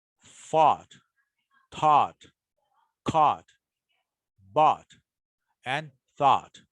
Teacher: the past participle forms of some irregular verbs made with the combination a u g h t or o u g h t are usually pronounced with o